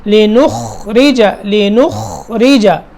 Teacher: لِنُخْرِجَ خا اس کو اس طرح ادا کرنا ہے کہ اس میں قلقلے کی آواز نہ آئے، حرکت نہ ہو اس میں. لِنُخْرِجَ لِنُخ یہ غلط ہو جائے گا، لِنُخْرِجَ لِنُخْرِجَ خا کو پکڑنا ہے، ٹھیک ہے، پھر را ادا کرنا ہے.